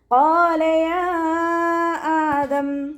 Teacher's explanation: ഖാഫ് ഇസ്തിഅലാന്റെ ലെറ്ററാണ്, ഉയർത്തിച്ചിരിക്കേണ്ട അക്ഷരങ്ങൾപ്പെട്ടതാണ്. തഫ്രീം ചെയ്തിട്ട് ഉച്ചരിക്കുക. അലിഫ് മദ് കൂടെ വന്നു, 2 കൗണ്ട് നീട്ടിക്കൊടുക്കുക കേട്ടോ.